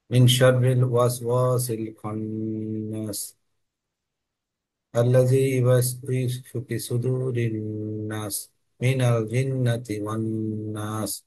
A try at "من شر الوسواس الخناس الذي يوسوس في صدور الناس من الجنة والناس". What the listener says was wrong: না, এটা দীর্ঘ হচ্ছে না, হ্যাঁ। একটু দীর্ঘ করতে হবে।